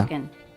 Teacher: She drops the NG consonant and instead makes it an N consonant.